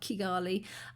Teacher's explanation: And the ch sound, apparently, from what we learnt in class, mostly came from the north of Rwanda and sort of the Ugandan sort of diaspora. And people in the south, or people sort of in Rwanda, would say with the hard Kigali.